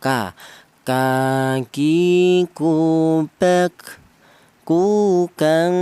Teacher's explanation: Huruf lam ujung lidah menyentuh langit-langit mulut. Huruf kaf ini keluarnya huruf berasal dari pangkal lidah